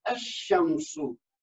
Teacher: हम उसको अल शमसु नहीं कहेंगे, बल्कि कहेंगे अशमसु। अशमसु यानी हमजा को शीन के साथ मिला देंगे